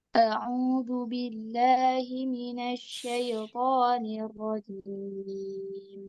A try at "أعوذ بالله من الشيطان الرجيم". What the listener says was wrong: Minasyaito. Oke, shinnya sudah syaito. Harfulinnya cukup mengalir dengan lembut. Jangan iya-nya jangan ditekan seolah-olah iya-nya berharokat. Mengalir syaito.